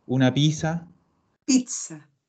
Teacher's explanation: la Z es lo más parecido que tenemos nosotros como fonema, es una TS.